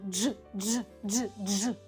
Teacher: ми читаємо дж дж не дзь, а дж дж